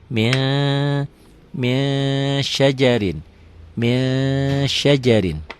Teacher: Min ditulisnya, dibacanya jadi min syajarin. Bukan hanya n ditambah g aja, ditahan juga, ada ditahan. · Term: ikhfa